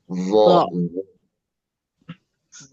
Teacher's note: Bedanya vo angkat pangkal lidah. Tapi ujung lidah sama-sama keluar.